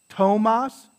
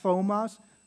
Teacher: Tomas, not thomas. It's not a th sound, it's just a t, tomas. Or, right?